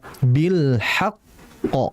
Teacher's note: Itu kalau kita berhenti, maka kondisi qalqalah qafnya itu sangat kuat. Karena apa? Bertasydid.